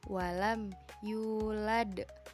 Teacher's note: Lalu, adapun qalqalah kubra atau besar, qalqalah kubra adalah huruf qalqalah yang berharakat sukun dan dimatikan karena wakaf atau berhenti dan pantulannya lebih jelas atau kuat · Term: qalqalah kubro